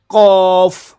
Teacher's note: زبان کی جڑ جب کوے کے قریب تالو سے لگے تو اس سے قوف ادا ہوتا ہے. قوف، اس کے اندر ہونٹوں کو گول نہیں کیا جائے گا، قوف نہیں، منہ کا ڈیزائن نہیں، صرف اور صرف جب آپ زبان کی جڑ کوے کے قریب نرم تالو سے لگائیں گے تو پھر یہ لفظ ادا ہوگا قوف قاف قاف.